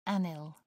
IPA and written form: ˈænɪl (anil)